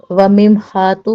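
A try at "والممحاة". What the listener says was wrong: ول ہے، وممحات نہیں، دیکھو جو لفظ ہے وہ پڑھو۔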